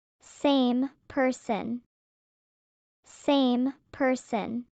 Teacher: The M in same and the P in person are lip sounds. They connect.